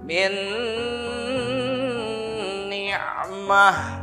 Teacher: di situ jadi ada sengau karena bigunnah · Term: idgham bigunnah